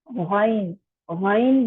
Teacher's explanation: آپ کے گلے میں ایسے رگڑ کھاتے ہوئے آواز نکلے گی خا خا, اور یہ پر بھی ہوگا. غین, غین بھی جو ہے یہ حلق کے ابتدائی حصے سے یعنی شروع والے حصے سے ادا ہوگا